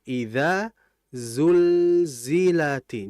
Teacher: Jadi za itu kata para ulama, mereka menyebutkan harfuz zai yushbihu sautan nahli. Huruf za itu kalau kita baca itu seperti menyerupai suara lebah